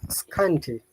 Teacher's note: now that T sounds like D. Flappy in American English